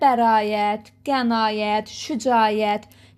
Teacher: burda həmişə a uzun tələffüz olunacaq.